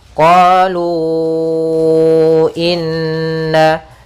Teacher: Terpisahnya hamzah bukan dalam satu kata. Maka kita panjangkan berapa harokat untuk mad jaiz? Kita panjangkan 4 harokat.